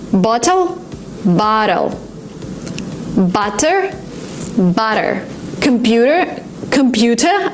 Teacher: in American English if you have a letter T in the middle of a word sometimes you pronounce it as d